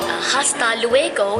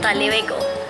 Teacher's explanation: Andalusian Spanish is where they say something like, you know, hasta luego in Latin America is, in Andalusia is ta luego. They drop the has and they pronounce the ta.